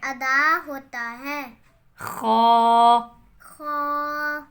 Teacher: حلق کے شروع والے حصے سے ادا ہوتا ہے.